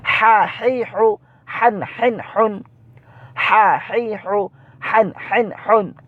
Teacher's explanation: এটার উচ্চারণটা কিন্তু গলার মধ্যখান থেকে উচ্চারিত হয়, একটু চাপ দিয়ে পড়তে হয়।